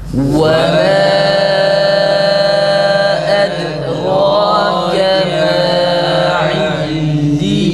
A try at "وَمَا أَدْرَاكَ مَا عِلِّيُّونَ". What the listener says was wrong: Acele etmeyin arkadaşlar, acele ediyorsunuz. Edrake'deki ra'yı uzatmıyorsunuz mesela. Ondan sonra ma'yı ondan dolayı fazla uzatıyorsunuz. Ve ma edrake ma illiyun. İlliyun şeklinde hızlı bir şekilde okumayalım.